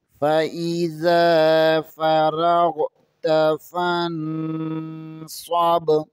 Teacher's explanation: با ساکن ہے، یہاں پر قلقلہ ہوگا